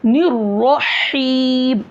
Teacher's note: ये हा हलक के दरमियान हिस्से से अदा होगा